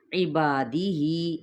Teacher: عین کو وسط حلق سے ادا کرنا ہے · با پہ الف مدہ کا قاعدہ، جس کو ایک الف کے برابر ہی کھینچنا ہے، یا پھر 2 حرکات کے برابر